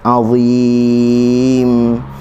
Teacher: Azim, huruf dha, hujung lidah di hujung gigi atas, keluarkan sedikit.